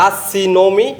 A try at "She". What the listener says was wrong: সি কি জিনিস? শি। শি শি শি বলো আমার সাথে, বলো শি। শি।